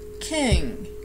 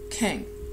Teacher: just as if there was a G but it's not fully pronounced it is closing the sound but really lightly